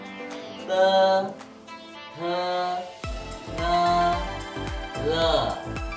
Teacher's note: Sekarang yang kedua adalah suara ujung lidah. Nah, ujung lidah kita di belakang gigi bawah, ya.